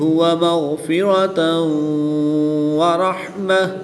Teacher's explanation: گول تا کو وقف کی حالت میں ہا ساکن سے تبدیل کر کے پڑھیں گے.